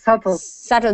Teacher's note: we do not say the b the B is silent